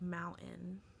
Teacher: that kind of breathy mid like thing in the middle that kind of replaces the t is considered a glottal stop